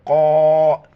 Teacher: بڑی قوف ہیں، موٹا کر کے پڑھیں گے. قوف الف مد زبر قا، 4 الف کی مقدار کھینچنا ہے.